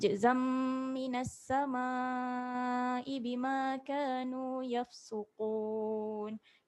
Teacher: Zam ni dengung. Zam rapat bibir sebab jumpa dengan mim.